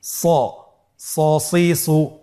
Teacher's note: এখানেও আমাদের একটা জিনিস খেয়াল রাখতে হবে, হরফটি যেহেতু মোটা অক্ষর, এই হরফটি সা বলা যাবে না, স বলতে হবে, একটু মোটা করে বলতে হবে